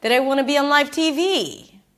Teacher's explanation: she goes a little higher for live TV.